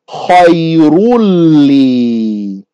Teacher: A noon. But the noon gets merged into the lam. And so it becomes خَيْرٌ لِي.